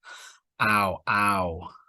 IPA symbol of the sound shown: aʊ